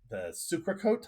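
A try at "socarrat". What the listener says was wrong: The socarat. You got to roll that R.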